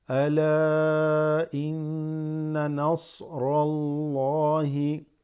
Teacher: إن, shad on the gunna, right? Shadda on the noon, you make gunna, holding the nose and slightly vibrating.